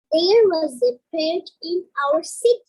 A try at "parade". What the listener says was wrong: When you say the word parade, make sure you get that ending D sound. Parade. Parade.